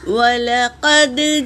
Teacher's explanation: واو حرکت ہے، لام اور قاف پر بھی حرکت ہے، دال پر سکون ہے، یہ قلقلہ ہے۔ قلقلہ کا قاعدہ ہے، پڑھتے وقت آواز ٹکرائے گی۔